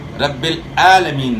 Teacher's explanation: عین کی آواز گلے کے بیچ سے نکالنی ہے